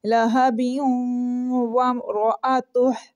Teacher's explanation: آپ رکیں گے نہیں، اس کو ملا کے پڑھیں گے تو پھر قلقلہ نہیں ہوگا